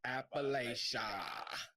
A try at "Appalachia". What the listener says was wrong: Make sure you hit that last A, family. It's Lachia.